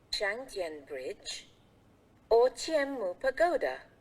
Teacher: in the sentence with a lot of choices, we will use the rising intonation for the first choice. Then, we will use the falling intonation for the last choice.